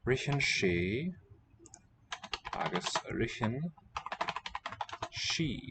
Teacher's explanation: the TH is not a th as in English, but a h, an H sound